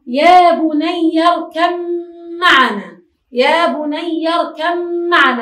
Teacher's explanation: الباء تخرج من الشفتين والميم أيضا من الشفتين، لكن للباء صفات وللميم صفات أخرى. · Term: إضغام متجانسين